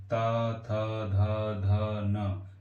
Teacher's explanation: दंत, ता, दंत से ता वर्ग को बोलेंगे, ता, था, धा, धा, ना। नहीं, दांत में थोड़ी जीभ का आगे का भाग दांतों में टच होगा।